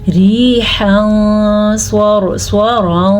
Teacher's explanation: ریحاً صَرْصَرًا، سواد پر، را بھی پر کیونکہ را ساکن سے پہلے زبر ہے